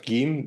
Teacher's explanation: Then you have Gim, that's a very normal G sound. In standard Arabic, that's actually a normal J, but Egyptians have turned that back into a G.